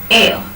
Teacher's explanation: front half open unrounded vowel to the central unrounded vowel between half close and half open